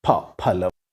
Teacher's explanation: This is pa, which is an aspirated variety of pa.